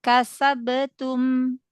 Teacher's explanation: Jadi udah di syiddah dulu di makhraj ba, baru dia kolkolah